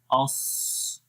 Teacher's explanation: ایک تو آواز اوپر کی طرف جاتی ہے اور دوسرا آواز کا انحصار زبان کے درمیان اور تالو کے درمیان ہو جاتا ہے، جس وجہ سے اس کے اندر صفت اطباق آتی ہے اور پھر اس کو اور زیادہ موٹا پڑھتے ہیں۔